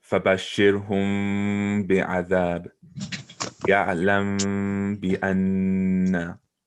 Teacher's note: But this one's already a meme, so you just continue to pronounce it like a meme, and try not to let your lips touch while pronouncing the meme sound. Whereas usually in a normal meme, your lips would be touching. · we pronounce the meme with a gunna and try not to let our lips touch. And that's really the only meme rule that is different than how you would normally recite.